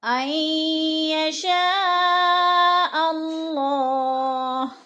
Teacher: عین یشاء اللہ، عین یشاء پہ جو مد متصل ہے، 4 الفی مد ہے، 4 الف کے برابر ہم نے اس کو کھینچ کر پڑھنا ہے، یعنی لمبا کرنا ہے. اور اللہ کی جو لام ہے وہ پر پڑھی جائے گی، کیونکہ اللہ سے پہلے لفظ حمزہ کے اوپر زبر ہے تو اللہ پر پڑھا جائے گا.